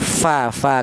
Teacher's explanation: Huruf fa ini berasal dari bibir bawah bagian dalam menyentuh ujung gigi seri atas.